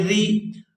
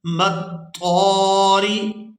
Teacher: را کے نیچے اگر زیر ہو تو را باریک ادا ہوتی ہے